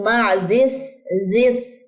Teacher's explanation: یہاں زا میں سیٹی آئے گی اور سا میں نہیں ہے